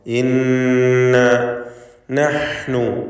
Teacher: ഷദ്ദുള്ള നൂനിനെ രണ്ട് ഹറക്കത്തിൻ്റെ അളവിൽ മണിക്കണം